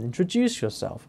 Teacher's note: You've got not only a rising, falling pattern, introduce yourself, but you've also got a stressed word there, which is introduce. And then it's one of the syllables within that word, juice, introduce yourself.